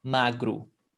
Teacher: Terminou em O, você pronuncia com U